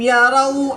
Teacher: واو ساکن سے پہلے را پر پیش ہے تو یہاں پر بھی واو مدہ ہوگا، ایک الف یعنی 2 حرکات کے برابر کھینچ کر پڑھیں گے۔ واو مدہ کے بعد نون کی زبر کو وقف کی حالت میں ساکن کر دیں گے تو یہاں پر مد عارض ہوگی، 2 سے 3 الف تک کھینچ کر پڑھیں گے۔